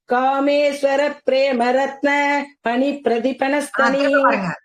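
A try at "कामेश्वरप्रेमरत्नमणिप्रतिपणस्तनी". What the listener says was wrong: அங்க பிரேக் விடக்கூடாது கண்டமா.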